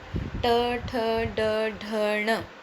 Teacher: जब आप ट, ठ, ड, ढ, ण, ट वर्ग का उच्चारण करते हैं तो आपकी जो ये जीभ है ये तालु से टकराती है। जब जीभ तालु से टकराती है तो उसे उस चीज़ को कहते हैं मुद्रा, मूर्धन्य।